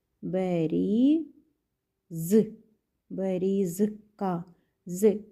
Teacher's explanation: з звук з приголосний твердий чи м'який у даному випадку він твердий